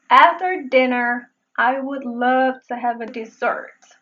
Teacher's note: dessert se pronuncia con | ɪ | después de la fonema | d | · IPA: dɪ